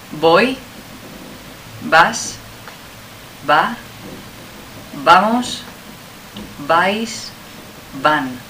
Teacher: in Spanish, as you know, the pronunciation is no different between the B and the V